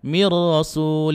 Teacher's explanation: cukup masuk saja tanpa didengungkan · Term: bilaguna